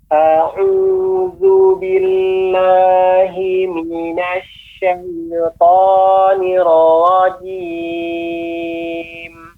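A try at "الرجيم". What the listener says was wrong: Untuk pengucapan ra ya Bapak, nirrajim. Jadi tidak langsung nirrajim, akan tapi ada tasdid, maka ada lebih temponya nirrajim.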